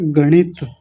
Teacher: जब हम गणित बोलेंगे तो जीभ ऊपर जाएगी और मूर्धा से जाकर के टच होगी जब इसका उच्चारण होगा। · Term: णकार